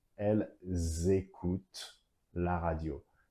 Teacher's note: The first remark is the liaison here. The verb starts with a vowel and elle ends with an S. Liaison.